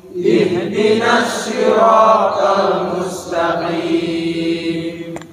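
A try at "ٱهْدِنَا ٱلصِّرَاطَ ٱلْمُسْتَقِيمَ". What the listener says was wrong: Saya kayak dengar ihdina, tetapi sebenarnya apa? Ihdina, huruf ha dimatiin ini.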